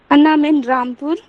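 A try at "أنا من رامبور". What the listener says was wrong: अना मीन रामबूर, रामबूर, इसे बा वाला साउंड देंगे, हाँ पा को पी को बी बना देंगे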